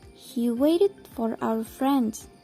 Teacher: Dan fokus dalam kalimat tersebut terdapat pada kata waited dan friends.